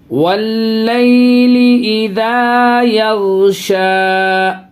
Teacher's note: یہ غین پہ آواز ہلے گی نہیں، قلقلہ نہیں کریں گی، بالکل بھی آواز ہلے گی نہیں